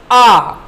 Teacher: विवृत, विवृत जिसका जिक्र हमने यहाँ पे किया था, विवृत का, इसमें मुख सबसे अधिक खुलता है,